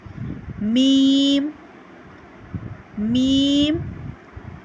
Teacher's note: दोनों होठों के खुश्क हिस्से से हम मीम को अदा करते हैं · دونوں ہونٹوں کے خشک حصے سے ہم میم کو ادا کرتے ہیں